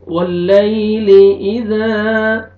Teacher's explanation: یا مدہ یا ساکن سے پہلے فتحہ، یا لین ہے، نرمی سے ادا کریں گے۔ واللیل اذا، الف مدہ، الف سے پہلے فتحہ، ذال کو آپ نے کھینچنا ہے۔